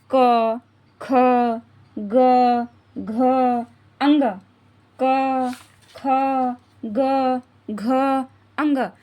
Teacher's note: कहां से निकल रहे हैं कंठ से हमारे कंठ से गले से निकल रहे हैं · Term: कंठ वर्ग